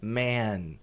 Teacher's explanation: A pronúncia de homem, que é M-A-N, é man, som longo de E, como se estivesse empurrando esse E para frente, man. E de homens, plural, olha lá, homens, M-E-N ao invés de M-A-N.